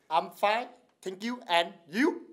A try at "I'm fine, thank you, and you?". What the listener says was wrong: And you, you! Okay, not too much, not going up with the tone.